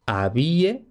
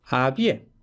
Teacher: el acento que podía fluctuar entre la I, como en español actual, había, o incluso en la E, había